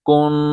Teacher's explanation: کاف نون پیش کن، یہاں غنہ ہوگا، ناک سے آواز نکالیں